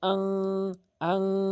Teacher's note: ইকফায়ে হাকিকির গুন্না হচ্ছে আপনি নাকের ভিতরে নিয়ে উচ্চারণ করবেন, যেমন আং, আং এরকম উচ্চারণ করবেন।